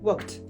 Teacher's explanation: le ed, il va se transformer en t